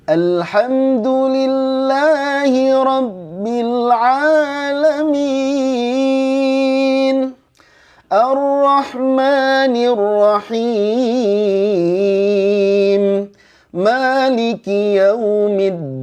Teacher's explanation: Jadi naik datar turun. Nahawan pertama naik, nahawan yang kedua datar, nahawan ketiga turun